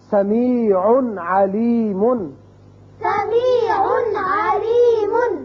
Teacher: تنوین جو نون اظہار ہوتا ہے یہاں تو اچھی طرح اظہار کریں گے ہم، سمیع نہیں کرنا یا سمیع، یہ بھی آواز غلط ہے.